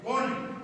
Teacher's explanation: قاف کے کل پڑھتے ہیں, موٹا پڑھتے ہیں